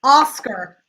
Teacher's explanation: That AR is just like an ER, which is that schwa.